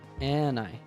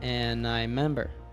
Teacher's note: So here, as sometimes happens in fast native speech, dropped the first syllable of remember, member. He also dropped the d from and linked it to I.